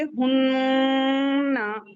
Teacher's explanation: नून मुशद्द और मीम मुशद्द इसकी time limit एक अलिफ या दो हरकत के बराबर खींच कर किया जाता है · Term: गुना